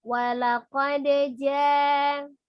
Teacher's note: Bunyi huruf waw sendiri adalah tengah-tengah ya, tidak siddah, tidak rogha, tidak ditekan, tidak terlalu dilepas, tengah-tengah, tawassut atau baini ya.